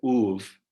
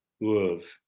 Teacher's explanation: So for example, you get uv, equivalent to ov for o or hu in standard Armenian. So there's a monophthongal u, whereas in Kesab you get uv with a diphthong